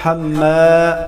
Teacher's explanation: میم مشدد پر ہمیشہ غنہ ہوگا. حما، الف مدہ کو ایک الف کے برابر کھینچ کر پڑھا جائے گا.